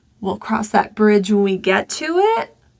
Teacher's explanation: if you want to sound confident, then you're going to use this high to low falling intonation.